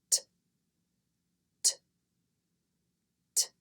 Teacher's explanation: Move the tongue down as you quickly blow air out of your mouth. This is a non-voiced sound, which means that your throat will not vibrate when you make this sound.